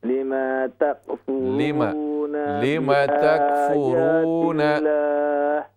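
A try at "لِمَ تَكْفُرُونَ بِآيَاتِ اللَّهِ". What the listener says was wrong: لما میم کے زبر کو لمبا نہ کیجیے. لما تکفرون بآیات اللہ.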